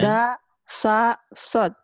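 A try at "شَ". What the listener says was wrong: Ais, enak aja sod. Ini shin ya, meringis.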